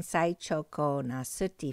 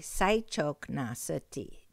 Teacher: Besides saying saichoko na suti for seven, you can say saichok na suti, just cutting the word a little short and throwing out the O.